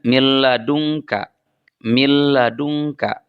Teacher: ada nun mati kemudian diikuti oleh lam maka nunnya diidgamkan kepada lam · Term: idgham bila ghunah